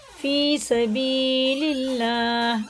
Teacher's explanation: अल्लाह का नाम ज़ेर से तो बारीक पढ़ेंगे